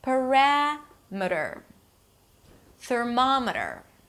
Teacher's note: the stress falls on the one syllable before the suffix, and suffixes are usually reduced